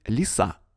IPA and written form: lʲɪˈsa (лиса)